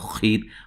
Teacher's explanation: خا کو موٹا، را کو باریک